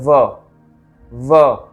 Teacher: अब आते हैं छठे सूत्र में अपने, षष्ठम सूत्र, वकारो दंत ओष्ठ्याः, मतलब व का जो स्थान है वो दंत से, दांत से और ओष्ठ के माध्यम से बोला जाता है।